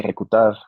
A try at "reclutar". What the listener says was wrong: Ojo que es reclu. Clu, no cool. Reclu. Reclutar. Reclutar. sí, es reclutar.